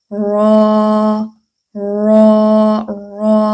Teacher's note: زبان کی کنارہ ہے آگے والا، یہ اوپر والے مسوڑوں سے تھوڑا سا اس کو گولائی میں کر کے تو اوپر مسوڑوں سے لگائیں